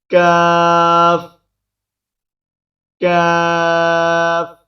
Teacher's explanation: زبان کی جڑ کو کوے کے قریب تالو پر لگا کر باریک آواز میں پڑھیں گے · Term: بریک کاف